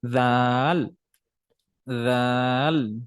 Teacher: লাস্টের দিকে যে ল টা উচ্চারণ হচ্ছে সেটা কিন্তু দাঁতের মাঝখানে চলে যাচ্ছে আমাদের মুখের ভিতরে জিহ্বাটা কিন্তু চলে আসতেছে যেখানে আবার যদি আপনি